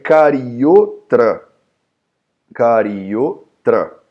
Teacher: Esse avagraha significa, aqui dentro tem um A, só que você não vai pronunciar esse A